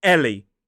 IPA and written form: ˈeli (Ellie)